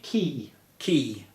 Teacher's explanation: the K sound makes your tongue touch to a roof of your mouth at the back